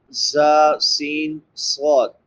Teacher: سیٹی کے ساتھ ادا ہوتے ہیں زا سین صاد